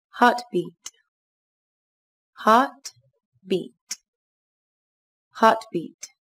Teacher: Các bạn lưu ý, từ này có 2 âm tiết, trọng âm rơi vào âm tiết đầu tiên các bạn nhé. Từ này đồng thời có chứa 2 nguyên âm, đó là nguyên âm A dài sẽ đọc là A và Y dài sẽ đọc là I.